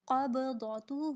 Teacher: قاف کو پر، ضاد کو پر اور با پر کلکلا